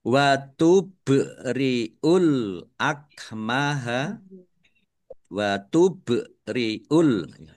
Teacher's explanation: ba sukun bacaan qalqalah ditampakkan pantulannya.